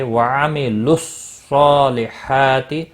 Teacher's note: صاد حروف مستعلیہ میں سے پر پڑھا جائے گا، اس کے اوپر کھڑی زبر بھی ہے، ایک الف کے برابر کھینچ کر پڑھیں گے۔